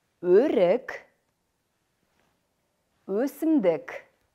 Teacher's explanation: Гласный, мягкий, переднеязычный, губной. При произношении звука губы сильно вытягиваются вперед. Язык продвигается вперед.